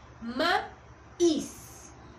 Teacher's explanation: Mi sílaba tónica es is y por ende es la que se escucha con más fuerza